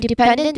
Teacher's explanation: dependent, which stresses the middle syllable, pen. Again, the ending is unstressed, so we place emphasis on the syllable before it.